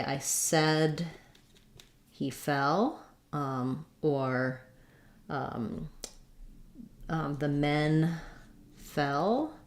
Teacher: fell is a little bit more open my tongue is a little bit more flat